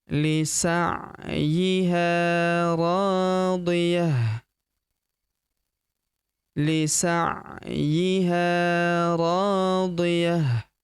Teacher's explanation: Lisa'yi ro huruf ro kita panjangkan dua harakat karena terdapat tanda alif di depannya yang ini. Radhi ta marbutah di ujung berubah menjadi ha sukun ya.